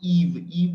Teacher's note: when you speak e your tongue position is actually at the front Okay tongue hump is actually the front that is why it is actually front vowel